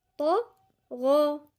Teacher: طا لساننا كله لفوق، طرف اللسان ووسط اللسان وأقصى اللسان كله لفوق · الغين برضو مفخمة، والألف تابعة لما قبلها، عشان الغين مفخمة فالألف بقت مفخمة، منقولش طغى، لا طغى.